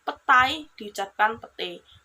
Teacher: Perubahan ini terjadi pada bunyi vokal rangkap AI ke vokal tunggal E.